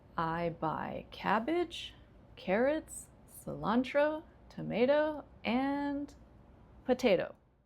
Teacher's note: So, if you have a list, each item has rising, rising, rising, and then the final one has falling · And so, what that means to the, you know, English ear, right? Is that when you're rising, you're still talking, you're still going, and then when you fall, it's completed